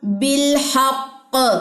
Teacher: تشدید والا کلکلہ ہے، اسٹرانگ کلکلہ ہوگا